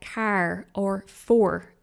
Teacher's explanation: In Irish English, the or at the end of words is very clear. So words like car or for are pronounced with a strong or at the end, unlike in many British accents, for example. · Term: R sound